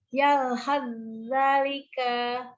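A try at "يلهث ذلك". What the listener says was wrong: Naam, jangan dinaber, karena di sini tasdidnya bukan tasdid asli, tasdidnya tasdid idgham, jadi jangan ditekan. Yalhadzalika.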